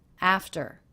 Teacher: The second syllable, very low in pitch, flat and quick.